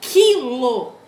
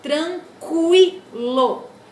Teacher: Quando eu falo quilo, esse Q com U é dígrafo, tá? Percebam que eu não pronuncio o U. Dá a impressão de que foneticamente é um K com I